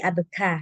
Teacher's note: Abeka, oh ada keluar angin sedikit, tapi nggak terlalu lebay abeka, nggak terlalu seperti itu. Abeka, oh ada angin sedikit ketika mengucapkan huruf kaf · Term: huruf hams